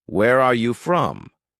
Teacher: For example, Where are you from? rises slightly at the end. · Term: rising tone